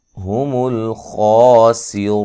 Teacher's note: बिही या मदा के क़ाइम मकाम, फ़उलाइका ये मद्दे वाजिब है, हुमुल खासिरून लाम को हिलाना नहीं है, ख़ा को मोटा अदा करना है